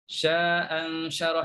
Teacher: Jadi bacanya ialah dua. Bacanya dua harakat. · Bila baca sambung sya'a'an syarah, maka buanglah satu hamzah.